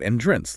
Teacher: an entrance, like a doorway, has the emphasis on the first syllable